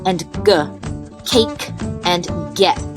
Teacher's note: made using the back of your tongue and the soft palate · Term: velar sounds